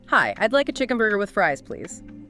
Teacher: Stress chicken burger and fries. Polite. Maybe a slight upward tone on please.